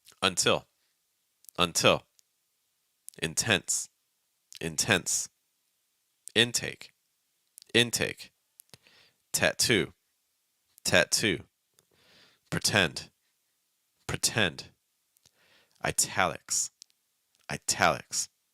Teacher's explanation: pronounce these in North America you're going to hear a true t sound not a fast D not a held sound or anything else